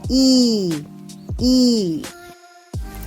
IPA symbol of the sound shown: i: